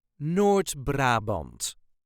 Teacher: if you can roll that R, the R, just a little bit, that would be great.